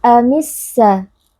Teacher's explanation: Cara membacanya adalah dengan mengidghamkan atau meleburkan alif lam ke dalam huruf sin sehingga alif lam tidak lagi terdengar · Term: alif lam asyamsiyah